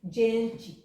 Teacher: uma inovação que foi palatalizar o G e o T seguidos de E ou de I